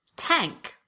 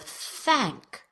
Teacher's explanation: most non-native speakers will substitute a t or a s. That's a T or an S, for a voiceless TH.